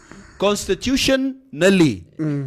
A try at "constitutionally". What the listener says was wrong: No, okay, but you have to say it as one word.